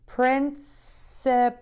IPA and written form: prɪnsəpəl (PRINCIPAL)